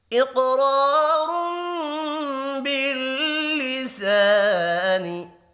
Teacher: قاف حروف مستعلیہ ہے، پر پڑھا جائے گا، قاف ساکن پر قلقلہ بھی کریں گے، 2 را ہیں، دونوں کو پر پڑھیں گے، الف مدہ کو 1 الف کے برابر کھینچ کر پڑھنا ہے۔